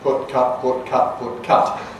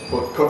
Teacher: they are still good rhymes in many varieties of north of England English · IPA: /pʊt/ <put> : /kʊt/ <cut>